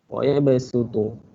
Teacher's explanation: Tapi cara bacaan dia kena sebut huruf sin. Dia tulis huruf sad tapi baca huruf sin.